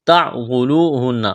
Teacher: نون مشدد ہے، آواز ناک میں چھپائیں گے، غنہ کریں گے